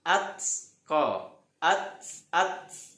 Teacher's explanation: ta sukun harus berangin atqo at at ya harus ada anginnya disebutnya sifatnya hames.